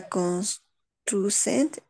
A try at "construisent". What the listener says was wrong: Niveau prononciación hasta la S solo. Mucho cuidado con eso. D'accord. Toujours ENT, c'est muet.